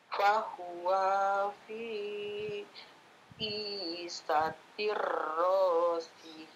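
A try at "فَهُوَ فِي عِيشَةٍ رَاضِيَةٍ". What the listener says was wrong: Fahuwanya pendek, nggak ada alif di sini. Fahuwa fi langsung. Fahuwa fi 'isyatir radiyah.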